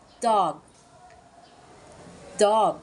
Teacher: bird bird moving on to dog which demonstrates the o sound when saying dog your mouth is lightly open and the tongue is low and towards the back of the mouth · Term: aw sound